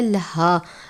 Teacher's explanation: ये मोटे वाली हा है या गोल हा जिसे हम कहते हैं, हल्क के आखिर से या सीने के बीच से अदा करते हैं भारी आवाज़ के साथ।